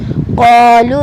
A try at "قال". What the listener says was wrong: लाम पर ज़बर है, अलिफ नहीं है.